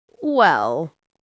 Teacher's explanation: The most common phrase is well with a falling tone.